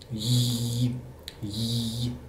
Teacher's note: wenn wir J sagen, dann merken wir, dass unsere Zunge eigentlich kurzzeitig den Gaumen berührt.